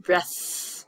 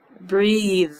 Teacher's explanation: So if you put your hand on your throat, you can feel the difference. Breath with a at the end, breath. My throat does not make any movement. But if I say breathe, I can feel the vibration in my throat. Breath, no vibration. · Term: voiced or voiceless